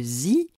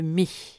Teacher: Le I transcrit le I long et fermé de zi, comme le I bref et quasi fermé de mi.